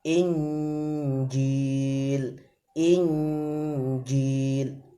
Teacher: Jim itu di tengah lidah ditekan ke langit-langit, jadi langsung dengung, tengah lidahnya langsung ditekan ke langit-langit, posisi dengung, langsung masuk ke dalam huruf jim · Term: ikhfa